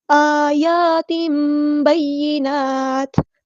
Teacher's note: تو یہاں پر ہمارے پاس حرکات مد آئی ہے تو ہم نے ایک الف کے برابر لمبا کرنا ہے، دونوں کو برابر